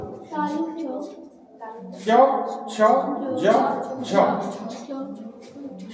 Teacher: ঠিক আছে, বাতাসটা বেরোতে বাধা দিচ্ছে কিভাবে? জিভটা তালুর উপরে মানে তালুর গায়ে লেগে যাচ্ছে। তখন আমাদের চ ছ জ ঝ এগুলো উচ্চারণ করছে।